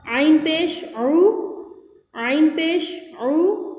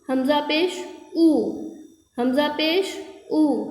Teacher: یہاں حلق سے نکلے گا عین، اور یہ حمزہ ہے، یہ حلق سے نہیں نکلے گا